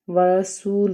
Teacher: واو ساکن کے پیچھے پیش ہے، اس کا مطلب ہے کہ واو مدہ کا قاعدہ ادا ہوگا، 1 الف کے برابر اس کو بھی کھینچ کے پڑھیں گے